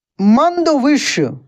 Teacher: ये दोस्तों मूर्धन्य श है, इसका उच्चारण मूर्धा से होता है